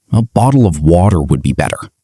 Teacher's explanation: But the waiter, who was British, had to listen closely. used the American flap T